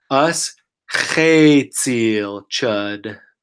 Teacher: the C makes a TS sound like in English cats